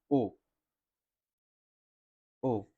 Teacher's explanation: कंठ का मतलब हो गया हमारा गला। कंठ और ओष्ठ। मिलाकर के बोली जाने वाली ध्वनि है।